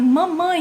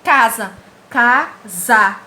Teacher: você vê que o som sai pelo nariz